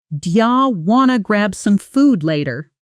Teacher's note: do you want to often becomes do ya wanna in casual speech